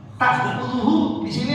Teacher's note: ta'khudhuhu di sini hamzah, bukan ain. Jangan nanti bacanya la ta'khudhuhu.